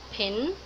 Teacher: the phoneme p is realized as the allophone aspirated p, word initially